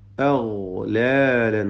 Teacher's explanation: ഗൈന് റിഖ്വായ അക്ഷരാണ്, റഖാവത്തോടുകൂടി ലൂസാക്കി ഓതണം. അഗ്ലാൽ എന്ന് പറയില്ല എന്ന് ഇങ്ങനെ അയവ് വരുത്തിക്കൊണ്ട് ഫഹിയ. · അഗ്ലാലൻ ഗൈന് തഫ്ഹീം ചെയ്യണം. പെരുപ്പിച്ച് സ്വരഭാരത്തോടെ ഫഹിയ. ഗൈന് റിഖ്വായ അക്ഷരാണ്, റഖാവത്തോടുകൂടി ലൂസാക്കി ഓതണം.